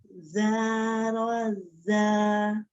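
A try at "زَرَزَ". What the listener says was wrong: Belum dapat za-nya. Ujung lidahnya keluarin sedikit. Za.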